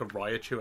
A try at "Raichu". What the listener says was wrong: A what? Very close. Yeah, I mean, it's just Raichu, you're overpronouncing the I.